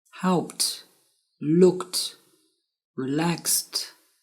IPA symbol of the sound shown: t